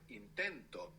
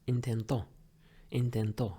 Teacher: the accent in the present tense is going on the penultimate syllable, the second last syllable.